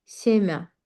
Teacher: Amma toxum mənasını verdiyində biz onu deyirik semə. artıq a kimi tələffüz edirik və mn incəldirik.